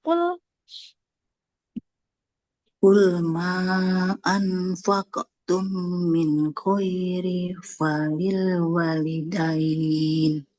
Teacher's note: qalqalah qofnya ma anfaqum karena qofnya tebal nah qalqalahnya ikut tebal